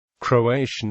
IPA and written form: kroʊˈeɪʃən (Croatian)